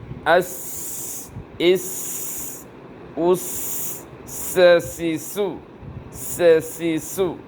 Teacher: শীষ হবে এবং বাতাস জারি থাকবে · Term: সিন